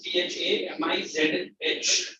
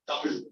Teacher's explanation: pronounce the word by turning your, twisting your tip of the tongue up